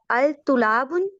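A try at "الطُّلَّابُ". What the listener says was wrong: अल नहीं, पहले तो अल को हटा दें, वो हुरूफे शमसी है, तो अत मिला दें इसको, ठीक है। अत कर दें, अतुल्लाब। बिल्कुल, तुल्लाबु। ठीक है, लाम पे भी शद आएगा, चलें अच्छा आगे चलते हैं।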